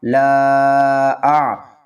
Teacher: لام کو 3 الف کی مقدار کھینچ کر پڑھیں گے کیونکہ اس کے اوپر چھوٹی مد ہے